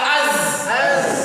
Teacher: fokus dia bukan pertemuan kedua gigi, tapi ujung lidah berhadapan dengan gigi atau ujung gigi seri bawah.